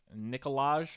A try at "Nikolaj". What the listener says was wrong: I don't think the J is pronounced, but yeah.